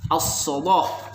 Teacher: Oleh Warash lamnya dibaca tafkhim